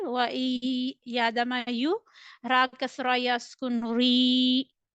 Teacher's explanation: There is ya madda. You need to stretch it equal to one alif. Make sure that you need to pronounce ra kasra with lighter tone.